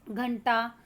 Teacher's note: बिंदु का उच्चारण ट वर्ग के पंचम वर्ण की न की तरह होता है। यानी कि जिस वर्ण के आगे बिंदु लग रहा है, जिसका है, उसके हिसाब से उसका उच्चारण होता है।